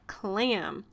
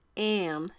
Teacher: It was a nasally sound. When you have an M or an N after an A, it's going to make that nasally kind of sound.